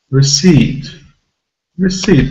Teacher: this word has a stress on the second syllable